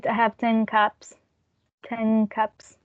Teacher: the k of cups influenced the n sound, and it's ng